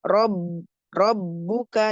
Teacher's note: Nah ba dan dal ini sama ya mempunyai sifat syiddah dan jahr. Jadi ketika bertasydid itu ada suara berjalan ya.